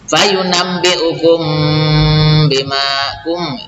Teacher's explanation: mimati bertemu ba, ikhfa syafawi ini didengungkan ya